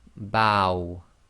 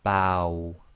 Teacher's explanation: So you say ba and then try to effectively say the waw. So you end up with a round lips making a small round circle. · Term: waw sakin